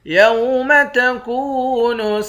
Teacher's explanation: کاف کو واو کے ساتھ ملا کر واو کو ایک الف کے مقدار کھینچیں گے